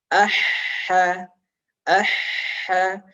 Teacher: Ketika kita buktikan jari kulit yang peka seperti ini, ada hembusan nafas yang deras lewat mulut kita. Kemudian rokhawah mengalirnya suara. · huruf ha ini makhrajnya atau sumber suaranya ini adalah dari tenggorokan bagian tengah. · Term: mengalir nafasnya